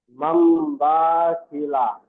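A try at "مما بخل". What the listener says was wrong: মাম বা, বা টান হবে না, হারাকাত। মাম বা খিলা। নুনকে মিমের দ্বারাই পরিবর্তন করে, মিমটি ধরে পড়েন, মিমের দ্বারাই পরিবর্তন করে।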